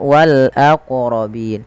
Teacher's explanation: Qalqalah yaitu bacaan memantul, sehingga dalam melafalkan wal aqrabin ini wajib memantulkan